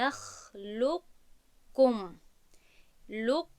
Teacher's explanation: یعنی که باز هم ادغام میکنیم اما ادغامی پره نیست، بلکه صفتی حرف یکم باقی میماند که در آن قاف در کاف ادغام می شود و قاف با تشدید خونده می شود و کاف بخشش این باید کاف باشد، کاف باید که با تشدید خونده شود اما صفت های استعلا در قاف باقی میماند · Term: ادغامی ناقص